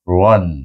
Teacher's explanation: huruf ro baca dengan tebal iaitu Ron ya dengan tafkhim